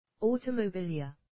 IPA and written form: ˌɔːtəməˈbiːlɪə (Automobilia)